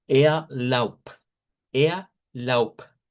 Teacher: Entonces, a pesar que aquí vemos una B, vamos a hacer su contraparte, que es en la misma posición y misma forma de articulación. Lo que cambiamos es sonido vibrante y sonido no vibrante.